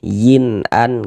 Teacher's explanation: Jadi bunyi nun sukun atau bunyi tanwin yang kita temui itu kita baca jelas. Kemudian tidak didengungkan, maka baca pendek saja. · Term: idhar halqi